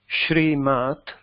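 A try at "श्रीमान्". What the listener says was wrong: No, this is na. Shriman.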